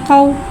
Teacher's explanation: वावलिन को बगैर खींचे बगैर झटका दे नरमी से मारूफ पढ़ेंगे